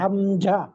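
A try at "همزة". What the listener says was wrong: হামজা, হামজা বলবেন না, এটা জ বলি না আমরা, জ এই জয়ের উচ্চারণ করেন, হামজা।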